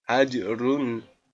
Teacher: Nah, cara membacanya yaitu hukum bacaannya qalqalah. Qalqalah sugro karena dalam satu kalimat. Cara membacanya yaitu dipantulkan.